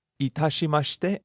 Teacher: Itashimashite starts low, rises on the second syllable ta, falls on the second to last syllable.